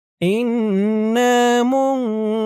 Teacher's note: এখানে অক্ফ করার কারণে পেশের পরে ওয়াও সাকিন এক আলিফ টান 3 আলিফ হয়ে গেছে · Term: মধ্যে আরজি